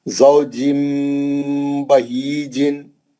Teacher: ज़ौजिम बहीजिन, तनवीन के बाद बा आ गया, तनवीन में जो नून है उसकी आवाज मीम से बदलकर गुन्ने से पढ़ेंगे। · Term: इखलाब